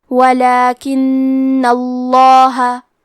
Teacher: جیسے کہ یہاں حرف نون ہے تو یہ 2 نون ہے، نون ساکن اور نون متحرک، اور کیونکہ تشدید زبر کا ہے تو لفظ الجلالہ کے لام کا حکم ہے تفخیم، تو ہم حرف اللام کو موٹی آواز میں پڑھیں گے · کلمت ولاکنہ میں حرف نون پہ تشدید ہے تو ہم 2 حرف کے برابر نون کو پڑھیں گے، کیونکہ تشدید کی اصلیت 2 حرف ہے.